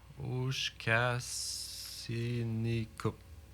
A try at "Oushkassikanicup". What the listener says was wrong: Oushkassikanicup. Ken. Oushkasikan, ouais, K-A-N, il manque K-A-N. Oushkassikanicup. Oushkassikanicup. Oushkassikanicup.